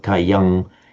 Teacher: it would tend to become a nasalized sound of cayang even in Sanskrit · Certainly in Sanskrit, on its own, it would be Kayam, distinctly with an M sound. But with the following S, it would tend to become a nasalized sound, of Kayang, even Kayang Sankamati in Sanskrit, but Kayang Sankamati.